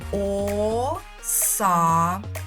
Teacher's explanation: Отже, саме цей голосний звук а і є наголошеним, а він знаходиться у другому складі. Отже, ми робимо висновок, що другий склад наголошений у слові оса.